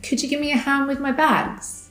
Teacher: When we reduce give me, the v at the end of give falls away, so what we hear is gi.